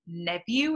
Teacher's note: softening of the v instead of the f